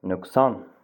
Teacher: Ö incə açıq dodaqlanan A qalın açıq dodaqlanmayan saitdir.